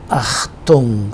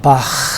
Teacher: That hanging part of velum is called uvula. Uvula touches the back part of the tongue, and sound, as we have in German Achtung sound, or in that next sound called Bach sound.